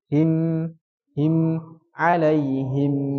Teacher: Ada sedikit dengungannya yang panjang. Him. Jadi tidak mandek. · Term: bainiyah